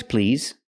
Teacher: use the vibration sound Z with the word please